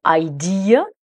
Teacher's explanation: le mot idée en anglais se prononce avec 3 syllabes. Et la dernière syllabe, c'est le son schwa, le son E.